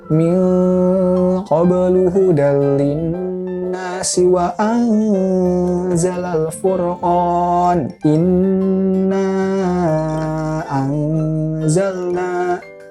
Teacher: nun mati konsonannya n berubah menjadi eng, mendengung.